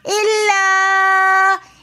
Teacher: الا کے اندر بھی مد منفصل ہونے کی وجہ سے ہم ایک الف کی 3 فنگرز کی مقدار کھینچ کر پڑھیں گے۔